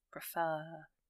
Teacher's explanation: So the stress is on the R section, the second syllable, if you like.